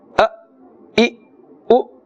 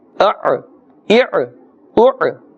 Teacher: the Hamza is one side that must be pronounced with a jerking sound, and the Ain must be pronounced with a jerking, but not like the Hamza. It must be pronounced according to its makhraj.